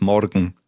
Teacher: in Bavaria you tend to roll the R